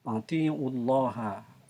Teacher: Atiullaha, Allah itu al-jaljalah, yang termasuk di dalamnya adalah lamnya adalah lam jaljalah yang dibacanya tebal ataupun tafhim